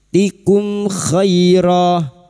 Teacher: Mim sukun dibaca jelas tanpa mendengung idhar syafawi.